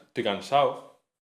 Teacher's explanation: No decir las Ds intervocálicas, estoy cansado. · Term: relajación articulatoria